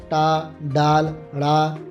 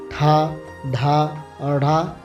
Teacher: ٹا، ڈال، ڑا غیر حقاری معکوسی آوازیں ہیں، ٹھا، ڈھا اور ڑھا حقاری معکوسی آوازیں ہیں